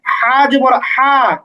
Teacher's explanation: বড় যে হা টা এটা একটু শক্ত করে গলার মধ্যে উচ্চারণ করতে হবে